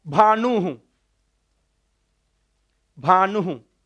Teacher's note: विसर्ग का उच्चारण स्थान ओष्ठ, विसर्ग का उच्चारण स्थान ओष्ठ।